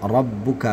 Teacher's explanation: ba-nya ada tasydidnya ya, maka ditekan dulu baru dilepaskan